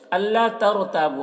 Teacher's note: را کو پر پڑھیں گے کیونکہ رائے ساکنہ سے پہلے زبر ہے